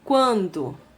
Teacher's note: é um ditongo crescente, só que não é oral, ele é nasal, porque o ar sai tanto pela boca quanto pelas fossas nasais